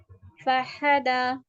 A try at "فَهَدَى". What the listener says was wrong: ہا نہیں ہ ہ.